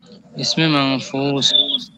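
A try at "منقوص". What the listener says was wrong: মানকুস, মানকুস না, মানকুস। কুস, হ্যাঁ, কফ কফ, এটা ফানা, দুই নক্তা।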